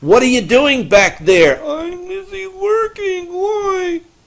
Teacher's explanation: you raise the pitch quite considerably, and you make it sound a lot more muffled, and that's the distant voice.